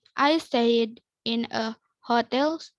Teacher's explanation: There's also a tendency to drop the H in hotel.